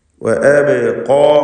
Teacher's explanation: അബ് എന്ന് പറയുമ്പോൾ ബഇൻ്റെ സുക്കൂൻ ഖൽഖല സുഗ്റ നൽകി ശബ്ദം ഹറക്കത്ത് പോലെ ചലിപ്പിക്കുക